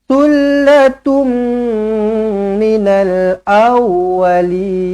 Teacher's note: jumpa dengan mim sabdu rapatkan bibir dengungkan dua harakat